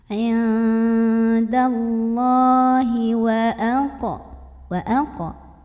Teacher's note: Allah mad asli atau mad tabi'i karena ada baris fathah tegak di atas huruf lam. Maka bacanya panjang 2 harokat.